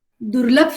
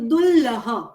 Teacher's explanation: મહાપ્રાણ વ્યંજન ભ છે એટલે એ હમાં બદલાય છે